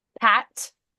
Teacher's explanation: Pat, only the ah is vibrating.